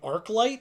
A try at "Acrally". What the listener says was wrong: No, there's no T at the end.